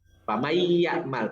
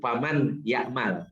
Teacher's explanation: Jadi nunnya itu nggak kedengaran. Jadi langsung ke ya. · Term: idgham